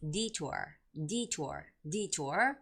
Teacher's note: the word detour is the first syllable stress word